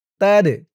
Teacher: দাল কলকলার হরফ ধাক্কা দিয়ে পড়তে হবে।